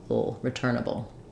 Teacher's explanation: almost no vowel between the b and the dark L